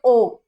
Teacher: अगर आप बोल रहे हो ओ, आपको पता चल जाएगा जब ओ बोलोगे तो आपके लिप्स की शेप कौन सी होगी, राउंडेड।